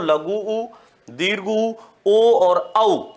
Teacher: जिनके उच्चारण में होंठ गोल हो जाते हैं, वृत्त की आकृति के समान हो जाते हैं, इसलिए उनको वृत्ताकार स्वर कह देते हैं।